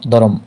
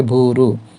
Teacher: উচ্চারণের সময় মধ্যে বা মাঝখানে স্বরধ্বনি আসে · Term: স্বরভক্তি